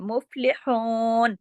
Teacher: فا کو جماؤ کے ساتھ پڑھنا ہے، ہلانا نہیں ہے